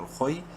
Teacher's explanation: خا کو منہ بھر کے پڑھیں گے لیکن شارٹلی کیونکہ نیکسٹ یا لین ہے